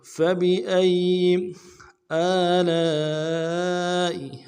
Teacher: سے ادا کریں گے، با کو نرم سے ادا کریں گے، حمزہ کو یا کے ساتھ ملانا ہے، یا کے اوپر تشدید زور دیں گے